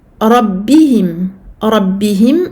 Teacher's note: Rabbihim, donc ra mufakhama. Ba doublé parce que shadda.